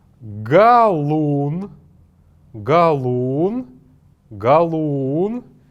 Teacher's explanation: «Галун», она имеет какое-то небольшое интонационное ударение вот на букве «у».